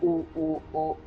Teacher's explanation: लेकिन अगर यही चीज़ हम गोल के बारे में बात करें तो वो हमारे ऊ, ओ, तो हमारे जो ओठ हैं वो गोल हो जा रहे हैं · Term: वृत्तमुखी